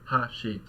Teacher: the first mora is accented, so it's higher in pitch. Immediately there's a drop, and the rest of the word, the last mora, is lower. Ha-shi. So we've basically just got this high-low contrast.